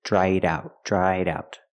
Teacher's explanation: I link the sounds with a fast D in the middle